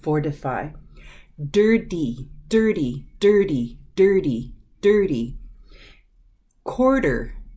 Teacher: Those vowels are controlled by the letter R. And when the letter T follows after this R-controlled vowel, it softens.